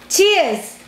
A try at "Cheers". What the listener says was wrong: Cheers. Cheers. Not beers. Cheers.